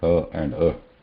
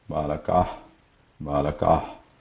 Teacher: ha has also vibration. Whereas visarga doesn't have vibration.